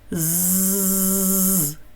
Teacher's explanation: Губки при цьому усміхаються, і в маленьку щілинку між зубками виходить тоненький і прохолодний наче сніжинки повітряний струмінь. Голосочок-дзвіночок також працює, тому звук з приголосний дзвінкий.